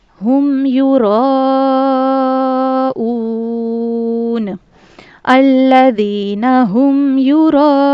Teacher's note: مد متصل کا قاعدہ یہ ہے کہ اس مد کو ہم نے 4 الف کے برابر کھینچ کر پڑھنا ہے